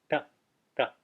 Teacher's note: underneath it it's in the retroflex class and it's pronounced T back behind the teeth curled up touching the roof of the mouth